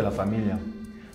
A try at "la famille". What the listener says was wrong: De hecho, no se pronuncia casi como las dos L al final. Es como si hubiera una I larga. La famille.